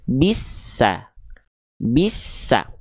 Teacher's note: Bisa tapi es-nya tekan dulu baru keluar vokal a-nya.